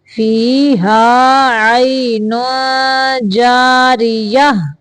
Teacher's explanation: فی جنت عالیہ، لا تسمع فیہا لاغیہ، لا تسمع فیہا لاغیہ، فیہا عین جاریہ، یہاں پہ اخفاء کا قاعدہ ہے، تنوین کی آواز کو ناک سے چھپا کے نکالیں گے